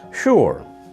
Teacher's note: In American English, we tend to stress the r more, and the vowel sound is more like a u than an o.